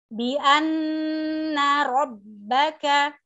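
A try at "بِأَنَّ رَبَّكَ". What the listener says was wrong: kurang keluar lagi. Ro, robba.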